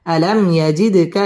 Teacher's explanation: আলাম মিম সাকিনে ইজহারে খাস গুন্না ছাড়া পড়তে হবে ইয়াজিদ দাল কলকলার হরফ ধাক্কা দিয়ে পড়তে হবে আলাম ইয়াজিদকা ইয়াতিম